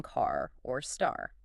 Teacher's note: We have to load that R posture during the vowel sound itself.